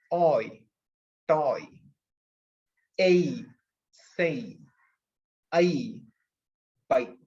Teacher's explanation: so first you pronounce o then you pronounce e so you are moving from one position to another position